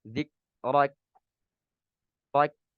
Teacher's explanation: tidak membaca hamas ketika huruf kaf dalam keadaan sukun